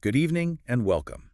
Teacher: Okay, for this phrase, let's practice that friendly, inviting tone. Focus on making welcome sound genuinely inviting, maybe with a slight upward intonation.